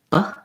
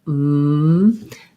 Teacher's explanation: So the air can be stopped, like b. It can continue, like m.